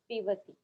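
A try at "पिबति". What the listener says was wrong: Pibati. Okay, it is Ba. Pibati.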